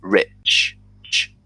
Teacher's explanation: At the end of a word, you can tell you're not using your voice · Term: ch sound